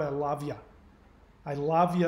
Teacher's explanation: i love you becomes a lovia you push it forward